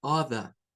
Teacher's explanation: de acuerdo a los británicos la r no se debe de hacer sonar eso sólo se Suena la o